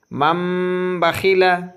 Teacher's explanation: دیکھیے، تنوین یا نون ساکن کے بعد با آئے تو نون کو میم سے بدل کر غنہ اور اخفا کے ساتھ پڑھیں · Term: اقلاب